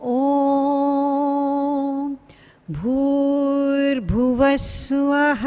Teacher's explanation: We don't stress the Swaha, Suvaha, but make it into one syllable.